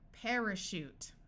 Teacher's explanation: Parachute. Notice the AR is followed by another vowel, so it says air instead of R, and this A schwas, it takes on the muffled sound.